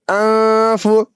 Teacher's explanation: نون ساکن کے بعد فا حروف اخفا میں سے آ گیا ہے اس لیے نون ساکن کی آواز کو ناک میں چھپا کر پڑھیں گے